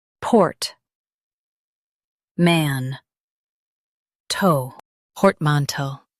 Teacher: Emphasize port and keep man smooth.